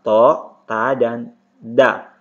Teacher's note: berasal dari makhraj al-lisan, tepatnya di ujung lidah, bertemu dengan gigi seri atas.